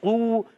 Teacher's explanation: قاف حرف مستعلیہ میں سے موٹا رہے گا، موٹا پڑھیں گے، زبان کی جڑ اور تالو کے نرم حصے سے قاف ادا ہوتا ہے۔